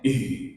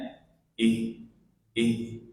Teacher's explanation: Dia makhrajnya di tenggorokan bagian bawah sini, bukan di dada. Kalau di dada nanti terlalu banyak udara yang keluar.